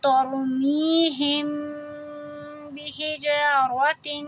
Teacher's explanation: می کو دو حرکہ کریں گے، یا سے پہلے زیر مد طبعی